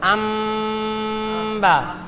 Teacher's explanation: নুন সাকিনের উচ্চারণ হবে না গুন্না সহিত এই মিমের উচ্চারণ হবে